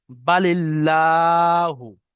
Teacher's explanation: যদি আল্লাহ শব্দের পূর্বে জের থাকে তাহলে আল্লাহর লামকে বারিক অর্থাৎ লা পড়তে হবে